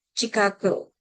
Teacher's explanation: It's pronounced Chicago with sh, but in Hispanic English, it could be ch